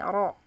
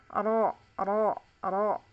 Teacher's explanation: untuk rok yang penting di gusi dan bunyinya seperti ini Oro satu getaran ya Enggak boleh Enggak boleh getarannya banyak